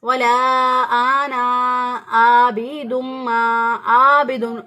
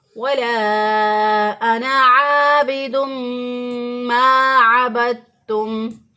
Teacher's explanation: ये आइन को हमजा से बदल देते हैं, आबिदुन कर देते हैं, तो भी गलत हो जाएगा। दुरुस्त अदायगी होगी वला अना आबिदुम मा अबदतुम।